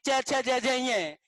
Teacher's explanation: देखें मित्रों यहाँ हम बात करें कि च छ ज ज ये दूसरी लाइन है, और यहाँ दूसरा उच्चारण स्थान कौन सा है, तालु। और ये तालु से च छ ज ज की लाइन उच्चारित होती है